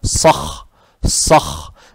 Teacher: Теперь буква «ха» она хриплая, с укуном, читается твердо